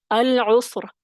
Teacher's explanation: سین ساکن ہے، را کو ہم نے وقف کیا تو پھر ساکن کر دیا اور عین کے اوپر پیش ہے تو را موٹا پڑا جائے گا